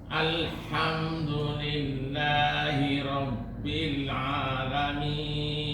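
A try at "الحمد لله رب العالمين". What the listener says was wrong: Lebih monyong Pak. Jangan putus.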